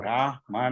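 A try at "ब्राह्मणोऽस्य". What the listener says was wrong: No, it's not Brahmanau, it is Brahmano.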